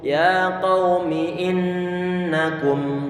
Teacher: Kemudian huruf nun dia bertasydid, dan jangan sampai lupa huruf ataupun sifat gunnah apapun adanya huruf nun tersebut ataupun mim tersebut, bagaimanapun keadaannya, sifat gunnah ataupun dengungan tidak mungkin ditinggalkan dari huruf nun ini. Sehingga harus selalu ada dengungan di saat mengucapkan mim ataupun suara huruf nun.